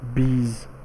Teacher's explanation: which is transcribed this way, long E sound, and then Z consonant sound